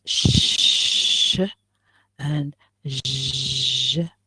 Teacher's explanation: pronounce these sounds and especially shh and what do you feel you feel that even the alveolar ridge is involved not just the hard palate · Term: palato alveolars